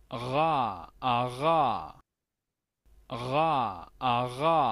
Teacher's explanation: De acuerdo al IPA, debería ser llamada R uvular